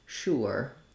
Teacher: Some people say that more like sure, with an oo vowel.